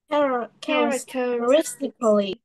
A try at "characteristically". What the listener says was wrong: Chỗ này không đọc là coolly mà mình sẽ đọc là tickly ha. Tickly. Characteristically. Những âm như thế này về con nhìn vào con sẽ bị rối, cho nên làm cho con một cái bước nữa là mình sẽ gạch cái số âm mình cần phải đọc ha.